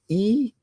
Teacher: spoken at the top of your mouth with your tongue high, and your tongue is in the front of your mouth when you make an E sound